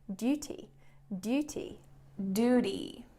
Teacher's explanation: she also replaces the t sound with a d sound